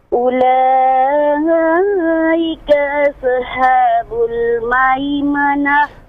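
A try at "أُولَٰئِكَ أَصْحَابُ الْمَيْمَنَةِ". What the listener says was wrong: Nah, jangan dipantulkan huruf shad. Semua huruf yang berhamas yang ada nafas mengalir jangan dipantulkan. Ashabu. Jangan ashabu. Itu pantulan. Ulaika ashabul langsung. Setelah sempurna nafasnya, masuk langsung ke huruf berikutnya.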